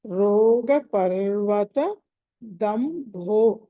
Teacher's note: రోగ పర్వత దంభో. అక్కడ భా మహాప్రాణము.